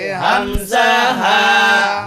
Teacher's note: হামজা হলকের শুরু হইতে